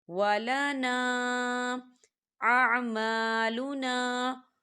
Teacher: الف مدہ بھی ہو رہا ہے اور اس کے اوپر مد بھی ہے، تو ہم اسے 4 حرکت کی بابر کھینچیں گے